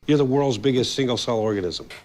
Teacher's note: the L is pronounced with a dark L where the middle of the tongue is raised towards the pallette creating that throaty sound